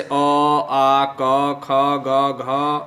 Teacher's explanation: जैसे अ, आ, क, ख, ग, घ, अंग, इसका जो ये जितने भी वर्ण हैं, इनका जो उच्चारण स्थान होता है वो होता है कंठ, यानी गले, गले से ये ध्वनि निकलती है, आवाज़ निकलती है।